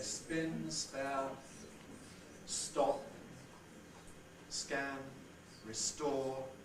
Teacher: notice that you don't get aspiration